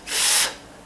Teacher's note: we're starting with a F, where the teeth touch the bottom lip